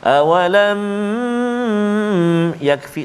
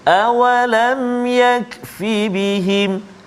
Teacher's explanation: Hukum izhar syafawi, iaitu cara bacaannya ialah dijelaskan mim mati tanpa dipanjangkan dengung. Maknanya jelaskan bacaan kita tanpa kita panjangkan bacaan kita ataupun tanpa dengung.